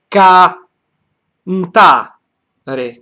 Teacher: kan is a high tone, ta is the main stress, re is a neutral syllable